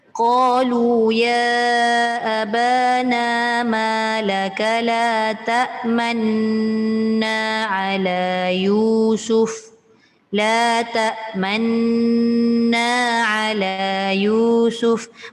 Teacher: Man tu tetap dibaca dengung 2 harakat. Maknanya ketika mendengungkan 2 harakat itulah proses kita muncungkan bibir. Itulah ishmam.